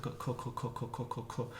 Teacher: To do the broad C, you just kind of make it further back in your throat.